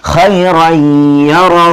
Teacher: دیکھیے دو زبر کے تنوین کے بعد یا آ رہا ہے، اس کے پر تشدید ہے. یا آنے کی وجہ سے یہاں پر غنہ کریں گے